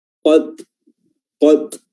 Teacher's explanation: Ada semacam hempasan atau pantulan dari udara atau nafas yang keluar dari sela-sela makhraj huruf ta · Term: hams